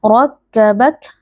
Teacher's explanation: Rakkabak huruf ra, huruf tafkhim atau huruf tebal karena ra di sini berharokat fathah dibaca dengan mengangkat pangkal lidah. Rakkabak huruf kaf yang disukunkan karena waqaf dibaca dengan mengeluarkan sedikit nafas